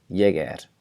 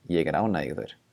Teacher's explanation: that R at the end is devoiced, ég er. But in the next sentence, ég er ánægður, I am happy, ég er ánægður, the R is not going to be devoiced in the word er, because there's a word that comes after it, ég er ánægður.